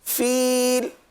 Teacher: فیل 3 الف تک کھینچ کر پڑھیں گے